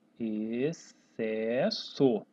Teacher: Note que eu nem pronuncio o X. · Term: dígrafo XC